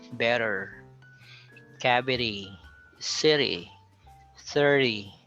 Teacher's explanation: you sound it like a D with the tongue not touching the alveolar ridge. It's in between T and D. It's not T, it's not D, so it's somewhere in the middle. · you just have to flap your tongue a little softly or very thinly to the alveolar on top, on the roof of your tongue or the base of your front teeth, the upper front teeth. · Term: flap D, flap d